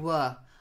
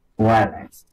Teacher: So it's not were, it's v. You've got to get vibration between your top teeth and your bottom lip.